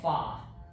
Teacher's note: I only pronounce R's if they're at the beginnings of words, not if they're at the ends of syllables.